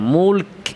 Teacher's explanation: মুলকুল খেয়াল করে কাফে প্রথমে আওয়াজ বন্ধ এরপরে বাতাস জারি এবং কাফ উচ্চারণে বাতাসটা কাফের মাখরাজ থেকে বের হবে জিহবার গোড়া থেকে যেখানে কাফের মাখরাজ